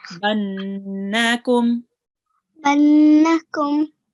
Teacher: So we stop for a little while, for about 1.5 seconds or 2 seconds on the noon again. Okay. Because this is a noon mashaddad.